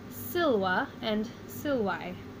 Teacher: breaking it into its syllables, and accenting the first of the 2 syllables.